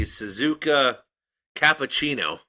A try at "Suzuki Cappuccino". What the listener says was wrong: First of all, it's Suzuki. You said Suzuka.